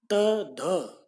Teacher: आपके जीभ दांतों से, ऊपरी दांतों से छू कर आती है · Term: दंत्य